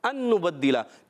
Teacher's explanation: نون ساکن کے بعد دوسرا نون آ گیا ہے، ہو جائے گا ادغام